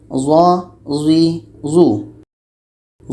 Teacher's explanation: Zo ini letaknya pada ujung lidah menempel dengan ujung gigi seri atas.